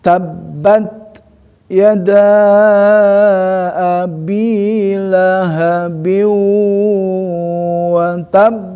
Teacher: harus ada tekanan ya sehingga wakaf ya di sini ba muncullah menjadi qalqalah